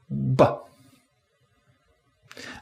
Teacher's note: We define b as a pulmonic egressive voiced bilabial plosive. So the air is coming out of our lungs, our vocal cords are vibrating, we close our lips, allowing pressure to build up, and then release it with a popping sound.